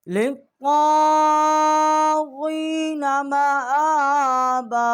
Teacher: اور لام کو ہم نے طاء کے ساتھ جو ہے وہ مشدد کیا ہے اور میم اور حمزہ جو ہے یہاں 1 الف جتنا آواز بلند کی ہے، با الف زبر با، اور یہاں بھی ہم نے 1 الف جتنا آواز بلند کی ہے۔